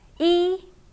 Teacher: e is a high flat tone